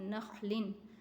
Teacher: نون تنوین کے بعد خا حروف خلقی میں سے ہے، یہاں اسخار ہوگا، نون کی آواز کو ظاہر کر کے پڑھنا ہے۔